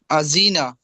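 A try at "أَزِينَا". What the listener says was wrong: আজি টান হয়ে গেছে। আদিনা, আদিনা।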